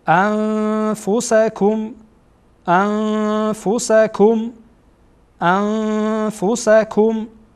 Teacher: بعد از نون ساکن در اینجا فا آمده بنا فا از حروف اخفا هست